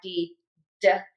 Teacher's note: tip of the tongue touches the back of your top front teeth, air puffs out, voice box is on and moving.